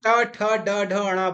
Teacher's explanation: तालू के ऊपर होता है उसको हम मूर्धा बोलते हैं ठीक तालू के के ऊपर का भाग जो होता है उसको मूर्धा बोलते हैं वहां से इनको उच्चारित करते हैं